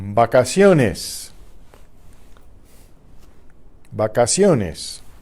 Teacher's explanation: When not between vowels, the V is pronounced like the English B.